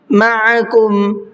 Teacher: قَلِّمَا، قاف کو بھی منہ بھر کے پڑھنا ہے۔ مَعَكُمْ، عین کو حلق سے نکال کر کے ادا کرنا ہے